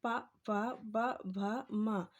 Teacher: इनका उच्चारण स्थल है होंठ। पा फा बोल के देखिए तो आपके होंठ जो है इनका उच्चारण स्थल क्या हो जाएगा?